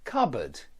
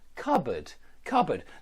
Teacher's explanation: the p is silent and the board is not a board it's a bud